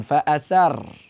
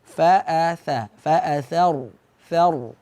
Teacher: Ra di sini karena sebelumnya baris fathah, karena huruf sebelum ra sukun baris fathah, maka dibaca tebal.